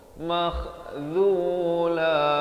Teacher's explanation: kha pula di hujung kerongkong